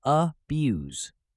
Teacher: on its use as a noun or verb it's pronounced abuse with stress on the second syllable